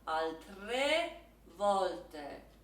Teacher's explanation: The E is a bit closed. The volte, that O is a bit open.